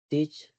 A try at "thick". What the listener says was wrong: Thick. Nggak usah pakai C. Thick.